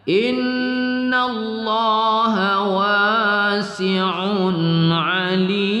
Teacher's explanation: Wasi'un ain berbaris tanwin bertemu ain kita baca tidak berdengung pada izhar halqi ya